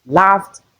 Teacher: The ed is realized as T because of the F sound we have before it.